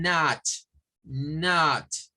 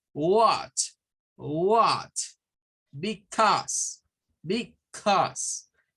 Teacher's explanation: Es más como no es tan abierta, se parece al schwa, pero es combinación entre A y O